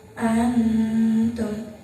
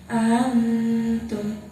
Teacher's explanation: Di situ ada nun mati bertemu dengan huruf ta, maka cara bacanya samar. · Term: ikhfa adna